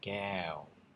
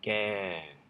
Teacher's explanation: And then what you're doing is you're tightening your mouth into a circle at the end